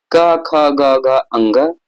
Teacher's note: क वर्ग का उच्चारण क ख ग घ अंग, ठीक है, कंठ से होता है